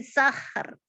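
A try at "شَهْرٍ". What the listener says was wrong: Sya. Di akhirnya sya bukan sa. Syahr. syahr. Roknya tadi kurang tebal.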